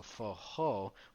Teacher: for brazilians they don't really have that r sound they have more of an h sound